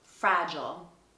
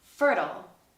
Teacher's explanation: in British English, we say I'll, but in American English, these tend to be ul